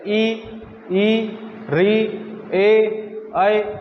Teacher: जो जीभ के आगे वाला हिस्सा है वो काम में लिया जाता है जैसे ई ई ऋ ए ऐ यानी कि आगे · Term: अग्र स्वर